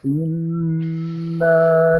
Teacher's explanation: عندك الغنه اكمل ما تكون بالنون المشدده